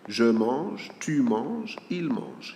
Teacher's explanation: the sound is supposed to be the same, whether there is S or not.